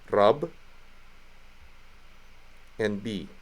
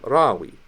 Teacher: Well, that beth again is having to perform double duty, so that we know there's two of them. It's going to be doubled. It's going to go hard. It's going to be that b, not the w sound.